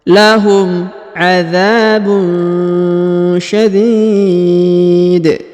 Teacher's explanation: Huruf tanwin un pada huruf ba ini bertemu dengan huruf sya, maka didengungkan dan disamarkan.